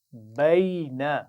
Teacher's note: آخر میں نون کو لمبا نہیں کریں گے